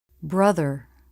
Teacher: Tongue tip through the teeth for the voiced TH. Lips and tongue are relaxed.